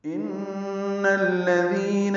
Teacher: ان میں نون مشدد پہ غنہ ہے، نون کو الذین کے لام سے ملانا ہے، تو ان الذین ہوگا، دال کو نرمی سے پڑھیں گے اور 2 حرکات لمبا کریں گے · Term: مد اصلی